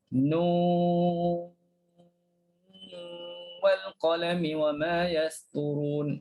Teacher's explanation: Jadi gunnah jangan lupa. Nun tekanlah hujungnya nun wal qal. Yang last tu kita tekan dan berdengung.